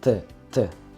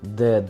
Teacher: Т звучит очень глухо, а звук Д действительно резонирует. От него прям шум в ушах.